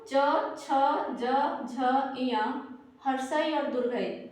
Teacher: इसका जो उच्चारण स्थान है वो तालु है